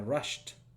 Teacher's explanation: Luego tenemos la palabra rushed, que va con T, porque el sonido de sh es uno de los sonidos que no tiene vibración.